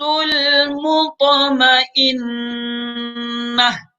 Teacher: المطمئنہ آخر میں گولتا ہے، اس کو وقفاً ہا بنا لیتے ہیں